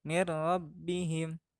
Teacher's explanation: Di sini juga nun matinya dibaca lebur karena menghadapi salah satu huruf idgham yaitu ro